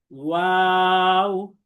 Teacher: ওয়াওয়ের মাখরাজ হলো দুই ঠোঁট গোল করে মধ্যে ফাঁক রেখে উচ্চারিত হয়।